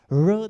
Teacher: r dilimiz ağzımızın içerisinde çok geriye doğru kıvrılmış. Likit bir ses ortaya çıkmış oluyor.